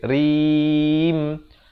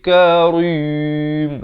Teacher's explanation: Karim, ra-nya jadi nipis, rim, jangan jadi tebal